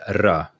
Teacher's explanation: So basically, when the natural R in Swedish is a r sound, it's a trilled R